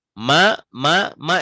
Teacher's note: Mak Mama itu suaranya keluarnya dihidung